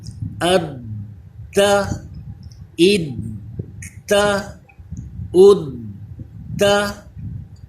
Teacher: جی جماؤ کے ساتھ اس کو ادا کیا جاتا ہے، اس میں قلقلہ ظاہر ہونا چاہیے، تھوڑی رک کر دیر لگائیں گے۔